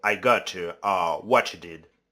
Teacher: palatalization occurs in English like t sound becomes ch sounds.